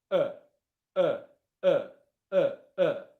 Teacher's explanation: My mouth isn't going into any wide positions. It's not e, it's not ah, it's not aw. My mouth is very, very relaxed and it's not doing anything. It's just making noise.